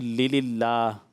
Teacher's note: اللہ پاک کے نام سے پہلے زیر ہوتے اس کو باریک پڑھا جاتا ہے